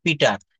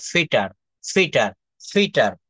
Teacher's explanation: এটা উচ্চারণটা হবে প কে ফ বলতে হবে